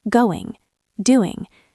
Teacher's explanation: In formal English, we pronounce the G at the back of the throat.